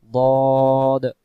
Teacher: দ অক্ষর মারির দাঁতের গোড়া থেকে মোটা করে পড়তে হয়